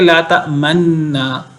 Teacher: تو تأمنونا ہے، لا نہیں، تأمنو آپ امین سمجھتے، اعتبار کرتے نا ہم پر، تو یہ دونوں نون مل کر اصل میں تأمنونا بن گیا، تأمنونا، اور پھر یہ نون کا دوسرے نون کے اندر ادغام ہو گیا، تو یہ ایک نون رہ گیا اور اس پہ شد آ گئی۔ اب جب یہ ایک نون رہ گیا، شد آ گئی، تو رہ گیا لا تأمننا۔